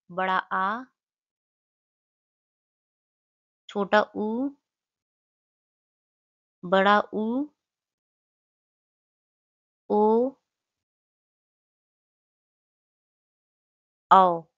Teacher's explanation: यह हमारे होते हैं पश्च स्वर। और इनके उच्चारण में जीभ का पिछला भाग सक्रिय होता है